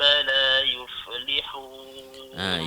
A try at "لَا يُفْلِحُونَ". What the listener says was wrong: Yuf tu pun jangan yufa. Jangan yuflihun. Dia dengar macam sedap kita baca tapi salah. Yuflihun.